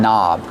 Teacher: The word knob has a silent K on it. Don't pronounce the K. Start with the N sound.